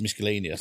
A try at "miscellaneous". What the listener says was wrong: focus on the way that you're saying miscellaneous. I don't think you pronounce the C.